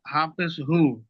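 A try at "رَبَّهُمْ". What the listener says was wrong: বাটা হায়ের সঙ্গে ফের জোড়াচ্ছেন কেন? এই অক্ষরটা দেখেন, এই অক্ষরটা কি রয়েছে? তাহলে হা বলেন, মিম বলছেন। হ্যাঁ, যুক্ত তো হবে, আগে হাটা বলতে হবে, তারপর মিমটা বলতে হবে।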